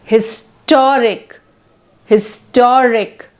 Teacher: Adjective ending in IC suffix like syllabic, like autocratic, historic, etc. So the stress is on penultimate syllable.